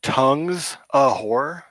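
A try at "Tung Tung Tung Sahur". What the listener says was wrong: Tung Zahor. Tung is Zahor, not tongue is Zahor.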